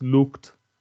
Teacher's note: In looked, it's a t, a voiceless stop.